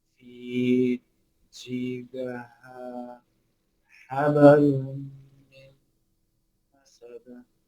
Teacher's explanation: That B bounced and that D bounced.